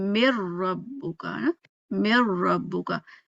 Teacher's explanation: ادغام کامل کیا ہوا کہ پیچھے والے کا کوئی اثر نہیں ہے، اب ہم اگلا لیٹر جو پڑھ رہے ہیں وہی پڑھ رہے ہیں، ٹھیک ہے، آپ کو نون کی غنہ کی آواز آئے ہی نہیں · کامل میں کیا ہوا کہ پورا کا پورا جو ہے نا ہم نے را ہی پڑھنا ہے، نون بالکل اس کا کوئی اثر ہے ہی نہیں۔